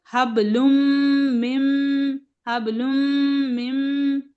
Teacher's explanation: बस आपको सिर्फ नून की आवाज को यहाँ निकालना नहीं है, और सिर्फ आपको क्या करना है? गुन्ना करना है दोनों जगह, दोनों मीम पर